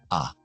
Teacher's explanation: Y después el otro sonido que es a. Boca un poco más cerrada, lengua un poco más alta.